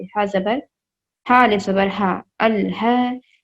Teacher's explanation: دیکھیں الف لام زبر ال، اس کے بعد چھوٹا ہا، گول ہا۔ گول ہا کو ہم نارمل پڑھیں گے، حلق سے ادا ہوتا ہے، حلق کے آخری حصے سے